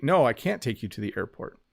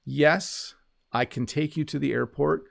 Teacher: I hardly pronounce the T on can't.